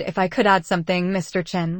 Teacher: The rising intonation at add makes it sound like a request, not a demand.